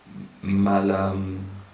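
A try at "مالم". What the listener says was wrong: No, a long vowel. Yes. Ma. No. Then the long vowel is only with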